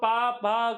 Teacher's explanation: प भ का उच्चारण करने पर हमारे होठ आपस में टच करते हैं। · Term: ओष्ठ